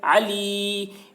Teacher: یا ساکن سے پہلے زیر ہے، یا مدہ ہوا، اس لیے یا مدہ کو ایک الف کے برابر کھینچ کر پڑھیں گے